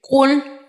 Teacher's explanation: قاف لام پیش کل، یہاں قاف دو نقطوں والا قاف ہے جو حرف مستعلیہ میں بھی آتا ہے، اور اس قاف کو پر یعنی موٹا پڑھتے ہیں، اور یہ قاف حرف قلقلہ کا بھی ہے، یہاں پہ دو نقطوں والا۔